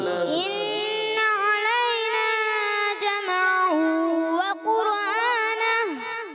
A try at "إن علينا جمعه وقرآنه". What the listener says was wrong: جمعه میم کو ہلائیں گے نہیں اور قرآن را کو بھی نہیں ہلائیں گے.